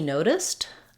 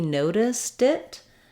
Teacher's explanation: when I link a T at the end of a word to a vowel sound, noticed it, then it has to change back to a D.